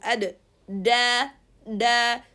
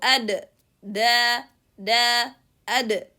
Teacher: So the tip of the tongue with the gums is closing. That leads the sound to be cut. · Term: dal